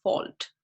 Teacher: there was also an insertion of the L sound as in like fault, right, where you see that L is kind of there in the complex coda position compared to like the Middle English era.